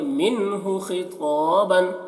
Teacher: نون کی آواز کو ظاہر کر کے جلدی پڑھیں گے بغیر غنہ کے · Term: اظہار